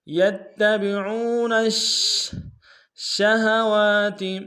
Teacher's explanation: شین حرف تفشی میں سے شین کے اوپر تشدید زور دیں گے